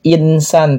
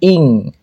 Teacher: nun sukun bertemu dengan sa, ini namanya ikhfa hakiki, dibaca secara samar